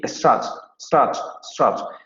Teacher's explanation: la palabra strut se va a pronunciar con la vocal posterior semiabierta no labializada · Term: foot strut split